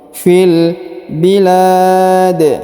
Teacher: Huruf lam dipanjangkan kurang lebih 2, 4 atau 6 harokat karena di depannya terdapat alif ya sebelum huruf pemberhentian. Dan huruf pemberhentian huruf di disukunkan dan dipantulkan ya karena berharokat sukun.